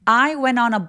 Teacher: 여기도 두 번째 단어가 어니까 모음으로 시작하니까 그래서 바로 앞에 있는 n 소리를 잡아서 when너라고 연결해 주시면 되겠네요.